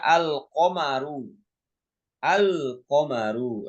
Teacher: lamnya dibaca jelas ketika bertemu qaf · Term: izhar qamariyah